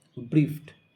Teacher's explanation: ব্রিফড, এখানে ফ সাউন্ড রয়েছে, ফ সাউন্ডের পরে ইডি রয়েছে, আর তাই ইডি এর উচ্চারণ টয়ের মতো